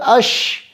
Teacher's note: تفشی اس کی صفت ہے جو کہ کہتے ہیں آواز کا منہ کے اندر پھیل جانا